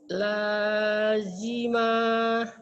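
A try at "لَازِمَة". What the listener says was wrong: Jangan ada hanya, Bu. Lazima. Lanya panjang. Lazima. Tinggal panjang pendeknya kadang-kadang Ibu lupa sama ujungnya suka ada haknya. Jangan ada haknya ya.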